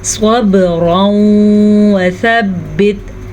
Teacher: تنوین کے بعد یمون، یا میم واو نون میں سے واو آیا ہے تو ہم ان دونوں کو آپس میں غنے کے ساتھ ملائیں گے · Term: ادغام بالغنہ